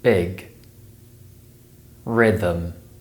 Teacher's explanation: the I sound is produced with the tongue slightly higher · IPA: /ɪ/